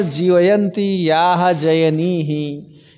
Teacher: जकार यकारयोर एकत्र स्थाने तालुच्चार्यत्वात् सादृश्यम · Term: जकार और यकार